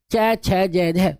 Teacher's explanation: जब आप च छ जह को बोलेंगे तो सर आपकी जो जीभ है वो तालू पे लगेगी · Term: तालू से